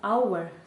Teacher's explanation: Це артикль, це те саме, що «а», тільки «an» ми вживаємо, коли після нього іде слово, яке починається на голосний звук, саме звук, тому що «hour» - це слово, яке починається на приголосну букву, на букву «h», але коли ми вимовляємо це слово, ми букви «h» не кажемо, ми кажемо просто «hour» - наша вимова починається із голосного звуку. Тому тут «an».